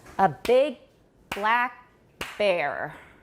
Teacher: there are no unstressed syllables between those stressed syllables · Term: paused